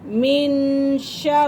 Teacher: نون ساکن کے بعد اگر حروف اخفا میں سے اگر حرف آ جائیں تو وہاں ہم غنہ کر سکتے ہیں، تو یہاں اخفا کے حرف آ رہے ہیں، ٹھیک ہے۔ من شر را کو باریک پڑھیں گے کیونکہ را کے نیچے زیر ہے